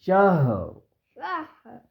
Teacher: ہا کی آواز سینے سے آئے گی